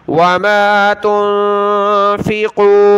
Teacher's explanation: نون ساکن کلرفل ہے ناک میں آواز پیدا کریں گے